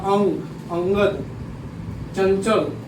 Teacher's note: अनुस्वार का जो उच्चारण होता है वह नाक से होता है, मुंह से बहुत कम ही होता है, नाक से इसका उच्चारण ज़्यादा होता है।